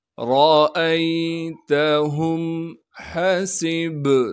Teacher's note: سین کو با ساکن سے ملانا ہے، با پر قلقلہ کیا جائے گا